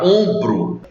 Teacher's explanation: É porque essa letra M que nós escrevemos na palavra ombro não está presente quando nós pronunciamos a palavra ombro. A gente vai entender que esse O apenas se tornou uma vogal nasal